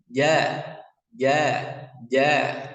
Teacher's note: lidah bagian tengah menempel di langit-langit mulut ya dan dia tidak ada nafasnya tidak menghembuskan angin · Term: huruf Jim